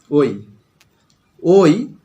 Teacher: ও যোগ হস্যই, ওই, এটি একটি যৌগিক স্বরধ্বনি। ও, ও যোগ উ, হস্য, ও যোগ হস্য, হয়ে গেল ও।